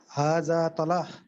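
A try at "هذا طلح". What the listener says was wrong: हादा तलह नहीं है, लाम साकिन है, तलह। हादा तलह।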